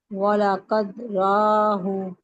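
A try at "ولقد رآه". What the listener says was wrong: रआहु हमजा है, ये अलग से पढ़ते हैं इसको, रॉ पढ़ेंगी तो मद्दा सुनाई दे रहा है ना।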